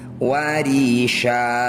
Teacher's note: alaikum libasayutikum warisya fathah tanwin dihentikan disebut bacaan madwat cara bacanya bunyi fathah tanwin kita ganti jadi fathah panjang